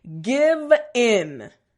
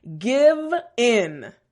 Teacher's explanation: that V sound front teeth bottom lip and a little bit of vibration